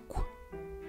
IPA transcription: kʷ